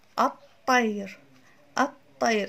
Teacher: كأنما أدغمت ال مع الطاء فأصبحوا حرفا واحدا مشددا لفظا الطير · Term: الإدغام الشمسي